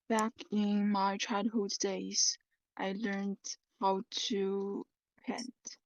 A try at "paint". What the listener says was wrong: Okay, not pen, paint. Take note of the pronunciation here. A. Can you try to open your mouth, please? A. Paint.